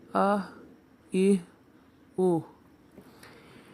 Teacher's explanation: अक्सा हलक से अदा होने वाला दूसरा हर्फ है हा। हा भी हलक के निचले हिस्से से अदा किया जाएगा।